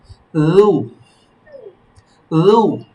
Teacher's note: লু জিহ্বার আগা থেকে, তারপর উপরে তালু, লু লু لو পাতলা, হ্যাঁ, লু।